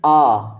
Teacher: ऐसा लग रहा है कि आ जो है शब्द कंठ के पीछे से आ रही है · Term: पश्च स्वर